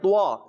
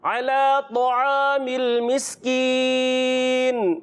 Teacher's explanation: طعامل یعنی موٹا بھی کرنا ہے, ہونٹوں کو گول نہیں کرنا